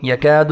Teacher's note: یکاد الکاف باریک ہے، الف کو 1 سیکنڈ تک کھینچیں گے